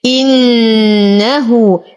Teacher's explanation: نشد النون بغنى أكمل ما تكون، لدينا هنا صلة صغرى حركتين.